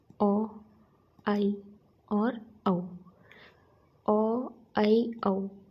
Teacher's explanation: अर्धविवृत। जब हम इनका उच्चारण करते हैं तो हमारा जो मुख द्वार है वो पूरा ना खुलकर आधा खुला रहता है।